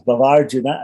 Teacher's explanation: Again, it's a Dirgha Sandhi. The two short A's come together to make a long A.